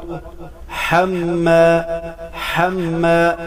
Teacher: حا گلے کے درمیان سے ادا کریں گے. حما، میم مشدد پر ہمیشہ غنہ ہوگا.